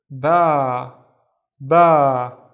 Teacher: the al if is making the ba twice as long